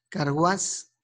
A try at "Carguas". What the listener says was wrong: Carguas. Ah, no, sin acento, sin acento.